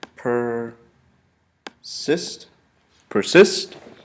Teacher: the accent is placed basically on the second syllable and the I, persist.